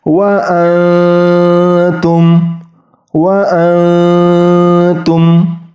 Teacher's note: bunyi nunnya itu hilang masuk langsung ke ta tetapi huruf ta-nya itu disamarkan yaitu disamarkan ketika ujung lidahnya tidak mengenai ujung gigi seri atas